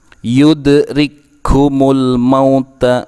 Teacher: Bunyi kaf terdengar seperti memiliki tashdid. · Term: idgham mutamathilayn saghir